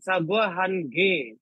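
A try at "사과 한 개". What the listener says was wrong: Hanke. Jadi bunyinya jadi K. Nggak boleh. Kamu tulis saja kata Hange, Sagua Hange gitu kan. Kamu suruh 5 orang Korea untuk membacanya. Coba kamu dengerin, mesti bunyinya Sagua Hange. Nggak akan ada bunyi Hange.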